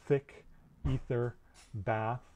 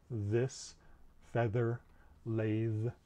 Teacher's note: represent they're both fricatives and they're both produced at the teeth we're putting the tongue right at the teeth or sometimes even between the teeth to make these sounds